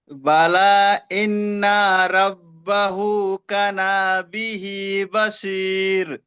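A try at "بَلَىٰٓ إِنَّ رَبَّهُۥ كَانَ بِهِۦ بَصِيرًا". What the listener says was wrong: হয়নি, এই বাসির বলে আপনি দাঁড়ালেন, কিন্তু এখানে তো দুজাবার আছে, তো রকে একালি টান দিয়ে তারপরে দাঁড়াতে হবে। হ্যাঁ, এইভাবে দাঁড়াতে হবে।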